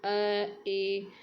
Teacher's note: अर्धविवृत जिससे आधा मुंह खुलेगा